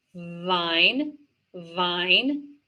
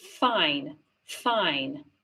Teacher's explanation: So it's the same position, the teeth and the lip, same position as the v sound, but without voice.